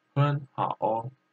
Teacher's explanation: we read the 很 like second tone 很好 because two third tone comes together